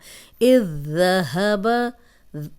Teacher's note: زال نرم بھی ہے، سیٹی کی آواز نہیں آئے گی۔